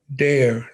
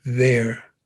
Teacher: African American speakers of English take the TH sound and change it to a D.